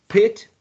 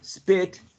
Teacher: you say pit the piece of paper moves maybe if you say spit the piece of paper does not move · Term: aspiration